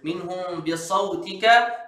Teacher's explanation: Kat ni ikhfa syafawi baca rapat bibir.